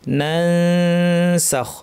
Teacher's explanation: জিহ্বাকে সিনের মাখরাজের কাছাকাছি নিতে হবে এখানে সিনের মাখরাজটা দেখানো আছে জিহ্বার একদম শীর্ষটা আমরা নিচের পাটির দাঁতের গোড়ার কাছে কাছাকাছি নিয়ে যাব সিন বলার জন্য আমার মুখ রেডি তারপর আমি নাক থেকে গুনা করি তাহলে সেটাই আমাদের ইখফার আওয়াজ হবে না সঠিক উচ্চারণ হবে নাহ